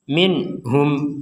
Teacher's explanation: jelas artinya terbebas dari pantulan terbebas dari dengungan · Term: dibaca jelas